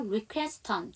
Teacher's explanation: request 다음에 on이니까 연음시켜서 requeston.